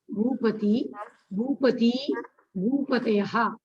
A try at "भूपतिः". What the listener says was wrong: Bhupatihi. It's not Bhupati. Bhupatihi, Bhupati, Bhupatayaha. Bhupatihi. I'm not hearing the Visarga sound.